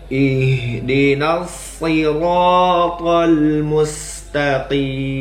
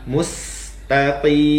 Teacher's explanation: huruf mim yang di akhir ayat tetaplah dibunyikan dengan jelas dengan menutup bibir kita